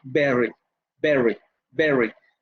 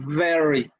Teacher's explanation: una es bilabial oclusiva y la otra es labiodental fricativa. Ambas son sonoras, pero se pronuncian de diferente manera.